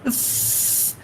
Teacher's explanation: we use the lower lip against the upper teeth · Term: labiodental